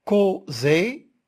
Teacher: Causer, le découpage syllabique nous montre que co, c'est une syllabe ouverte, alors le O il est fermé